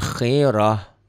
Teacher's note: Ta marbutoh bunyinya berubah menjadi ha.